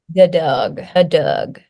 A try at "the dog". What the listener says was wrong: And it's not Doug, dog. That one's not a schwa. Dog.